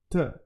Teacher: T is like a hitting. It's hitting that part of the upper teeth.